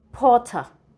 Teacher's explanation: using the standard British English the r must be silent